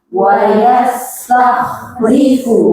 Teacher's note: Sinnya tipiskan, jangan ditambah sifat jadi tebal.